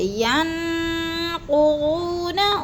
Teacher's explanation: ین پہ جو ہے اخفا ہے، آواز کو ناک میں چھپا کر پڑھنا ہے۔ نون ساکن کے بعد قاف حروف اخفا میں سے آگے تو ادھر اخفا کریں گے، جیسے ینقضون، وہ پہ جو ہے وہ مد ہے، اس کو بھی لمبا کرنا ہے۔